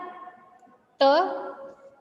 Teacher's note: Kalau dia te, lidah kita bertemu antara gigi atas dan gigi bawah kan? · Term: Alveolar